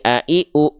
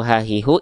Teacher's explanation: Yang ini a i u enggak keluar nafas karena pita suara menutup itulah Hamzah Kalau ha hi hu itu adalah ha besar Kenapa dia ada nafas karena pita suaranya membuka